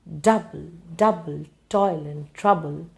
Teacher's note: you are putting stress on the first syllable and putting the second syllable without stress so this is called a trochaic feet it's called a trochi